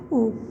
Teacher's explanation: यह हिंदी का संवृत दीर्घ पश्च स्वर है।